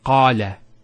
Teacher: Notice the elongation of the A sound. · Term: long vowels